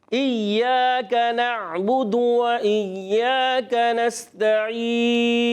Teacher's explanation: اور وقف میں کیا ہو جائے گا نون کو ساکن کر دیں گے